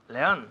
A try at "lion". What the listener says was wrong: Lion en inglés, no león, sino lion. Ok, lion.